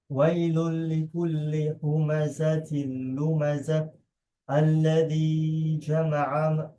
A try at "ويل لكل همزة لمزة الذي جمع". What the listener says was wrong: There's no mud here. مالا, it has nasal. It has a nasal element to it. Don't forget that. That's a different recitation. Without the nasal element is a different recitation. مالا, without the nasal. That's khalaf. This hams in hafs, it has a nasal element. مالا.